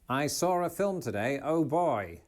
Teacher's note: he's pronouncing an R after the word saw